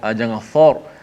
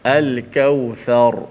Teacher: Tha tu dikekalkan nipisnya, dan juga apa nama ni, ra itu yang tebal.